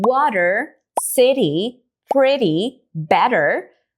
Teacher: o som do t parece que desaparece ou se transforma para um d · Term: flap t